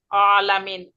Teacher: আইনটা হচ্ছে কণ্ঠনালীর মাঝ থেকে উচ্চারণ হয়, এবং এটা একটু আইন, আলামিন।